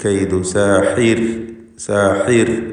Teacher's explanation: സാഹിർ എന്ന് നേർപ്പിച്ചുകൊണ്ട് റാഇന് ഉച്ചരിക്കുക. സാഹിർ എന്ന് പറയുമ്പോൾ ഹ തൊണ്ടയുടെ മധ്യമാണ് അതിൻ്റെ മഖ്റജ്, പ്രത്യേകം ശ്രദ്ധിക്കുക, വ്യക്തമായി ഉച്ചരിക്കുക. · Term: തർക്കീഖ്